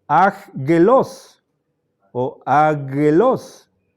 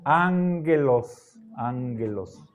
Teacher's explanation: En vez de pronunciar aggelos o agelos, la primera gamma suena como N